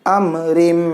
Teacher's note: تنوین کو میم کے ساتھ ملائیں گے, ادغام کریں گے یہاں پہ تو گنہ کے ساتھ کریں گے. امرم یہ میم کو اظہار کے ساتھ پڑھیں گے اور یہ جو میم ہے یہ گنہ کے ساتھ پڑھیں گے.